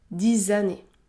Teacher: Le X se prononce Z, Z, 10 années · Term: liaison